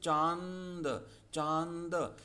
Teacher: च और न की ध्वनि नाक से निकलती है तो हवा नाक और मुख दोनों से निकलती है। ऐसे वर्ण अनुनासिक कहलाते हैं।